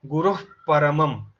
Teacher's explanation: আর ফয়ের আগে একটা হাস সাউন্ড চলে আসবে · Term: উপধমানীয়